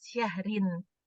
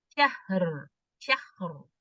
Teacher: itu syahrinnya itu ro-nya tipis syahrin. Tapi pada saat dia diwakafkan, dia akan menjadi syahr. Syahr. Ro-nya menjadi tebal. Syahr. Tapi kalau dia lanjut ya syahrin tipis. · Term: ro tebal